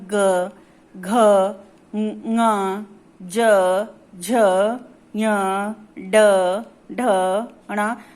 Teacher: जिन व्यंजन वर्णों के उच्चारण में स्वर तंत्री में कंपन होता है उन्हें घोष व्यंजन कहते हैं